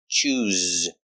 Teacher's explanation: use the Zebra z sound with vibration